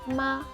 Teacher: if I want to say the word mom, you use the high tone